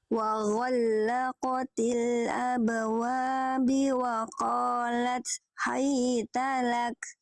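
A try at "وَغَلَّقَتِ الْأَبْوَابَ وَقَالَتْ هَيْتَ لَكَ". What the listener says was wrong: Oke, bukan abwabi tapi abwaba. Nah ya, harokatnya fathah di atas ya.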